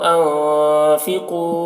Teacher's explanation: نون میں اخفا ہوگا کیونکہ نون ساکن کے بعد حروف اخفا میں سے فا ہے. انفقو، قاف کو پر پڑھیں گے، قاف حروف مستعلیہ میں سے ہے.